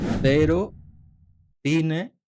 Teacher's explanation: Delante de E o I puede sonar como una Z, como en cero, cine, pero esto es en España. En Latinoamérica sonaría como una S, sería cero o cine.